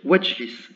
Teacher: La voyelle ici disparaît complètement, le i disparaît, et on va dire wajlis. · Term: voyelle de liaison